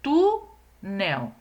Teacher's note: Então tu é a sílaba mais forte então é a penúltima sílaba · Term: paroxítona